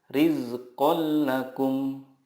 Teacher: meleburkan nun sukun ke huruf berikutnya tanpa gunnah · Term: idgham bila gunnah